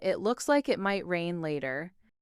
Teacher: the intonation rises at the end, making it sound like a friendly remark